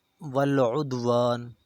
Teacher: دال ساکن ہے، اور دال جو ہے حروف قلقلہ، اسے ہلا کر پڑھا جائے گا